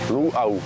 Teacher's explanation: But the pronunciation of that word is luau. There's a glottal break between the u and the au part.